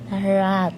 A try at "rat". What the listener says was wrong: Ra. Ra. Hindi ra. Hindi ra. Ra. Huwag mo i-apply yung Pinoy na ra. Ra. No, ra na naman. Ra. Minsan, hindi natin naririnig sarili natin.